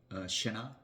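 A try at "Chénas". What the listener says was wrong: You keep the S a little silent. totally silent. Chenas. Chenas. A little bit.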